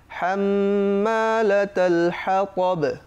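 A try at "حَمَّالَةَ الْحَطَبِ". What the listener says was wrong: হাম্মা চাপ দাও, হাম্মা এখানে কি গুণনা হয়েছে? ওয়াজিব গুণনা।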